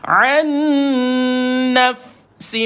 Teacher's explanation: matikan fa, ada hams pada dia, bunyi angin keluar.